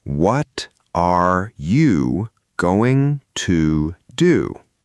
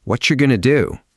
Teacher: What are you becomes what you. The are you part practically disappears. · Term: reduced